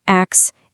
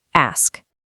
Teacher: It's not ax, it's ask. Hear that crisp S sliding right into the K?